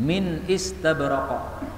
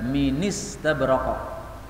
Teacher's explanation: Demikian juga pada ayat 54 min istabraqa boleh dibaca min istabraqa. Ini namanya bacaan naql karena harakatnya dipindah ke sebelumnya.